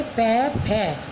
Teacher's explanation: हमारे दोनों ओष्ठ आपस में मिल रहे हैं, ओष्ठ मानी होंठ, तो ये बोले जाते हैं ओष्ठव, यानी होंठ से ओष्ठ्य,